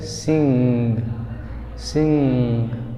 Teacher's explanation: इसमें लास्ट में ये ध्यान देना है कि गा नहीं आता